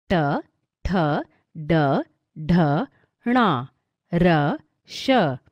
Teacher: जिन वर्णों का उच्चारण मूर्धा से होता है उन्हें मूर्धन्य कहते हैं